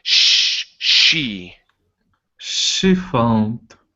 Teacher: give me that sh, because if not, it sounds like you're saying chi. It's she. She found.